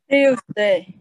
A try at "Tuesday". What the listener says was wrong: Chúng ta đừng đọc chữ tiêu. Trong tiếng Anh nó không biết tờ. Nó hơi khác vậy. Người Việt mình có cái tờ đúng không?